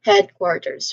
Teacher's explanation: the primary stress it falls on the first syllable head. So, you say this part with slightly more emphasis of course.